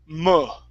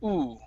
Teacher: your lips are going to be in more of a circle instead of being tightly closed, like ooh. Okay, so it's an and you want to think of pushing the sound right through the bottom of your mouth.